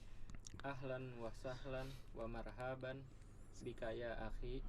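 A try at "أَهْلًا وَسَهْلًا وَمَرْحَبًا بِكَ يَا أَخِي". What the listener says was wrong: Ya, wa marhaban hanya pendek. Ahlan wa sahlan wa marhaban.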